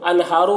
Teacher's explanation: انہارو کے نون میں اظہار ہو رہا ہے، نون کی آواز کو جلد پڑھیں گے. ہارو ہا میں کھڑا زبر ہے، ایک الف کے برابر کھینچ کر پڑھیں گے.